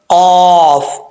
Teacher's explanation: ज़ुबान की जड़ ऊपर वाले तालु के नरम हिस्से से लगे तो कौफ पढ़ा जाता है